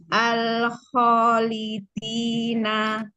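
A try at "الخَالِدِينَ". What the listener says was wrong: Lidi. Tahan lagi nafasnya biar jahar. Dalnya majukan lagi makrotnya di ujung lagi. Al-khalidina.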